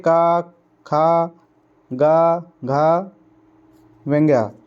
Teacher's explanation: अब आगे हम बात करते हैं कंठीय व्यंजन की। जीभ का पिछला हिस्सा हमारे कंठ को छूता है।